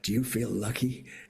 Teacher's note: that kind of breathy California voice not there at all.